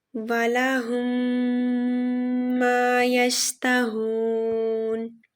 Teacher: اس کی ڈیفینیشن ہے داخل کرنا یا 2 حروف کا آپس میں مل جانا، اور اس کا رول ہے اگر میم ساکن کے بعد میم مشدد آئے تو وہاں ادغام شفوی ہوگا، یعنی دونوں میم ایک دوسرے میں مل جائیں گے اور ان کو غنہ یعنی ناک کی آواز سے ادا کیا جائے گا